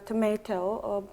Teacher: In British English it is pronounced uh tomato with a long a sound